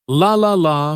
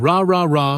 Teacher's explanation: The key here is tongue placement. For the L sound, the tongue touches the top of the mouth behind the teeth, but for the R sound, the tongue stays back without touching anything